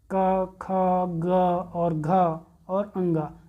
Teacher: कंठ से उच्चारित होने वाले वर्ण क वर्ग होते हैं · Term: कंठ उच्चारित वर्ण